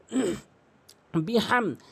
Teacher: হাটি হলকের মাঝখান থেকে উচ্চারণ হয়। বাজরে বি, হামিম জবর হাম, এটি হলকের মাঝখান থেকে উচ্চারণ করবেন।